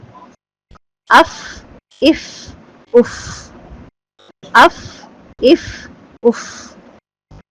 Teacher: جب سامنے کے اوپر والے دونوں دانتوں کے کنارے نیچے والے ہونٹ کے اندرونی حصے سے لگتے ہیں تو حرف فا ادا ہوتا ہے